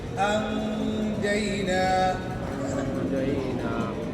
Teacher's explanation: حمزہ نون زبر ان ہے، نون ساکن ہے، اس کے بعد حرف جیم آ گیا ہے، جیم اخفاء کے حروف ہے، تو انجینا نہیں کہیں گے، نون کی آواز کو ناک میں چھپا دیں گے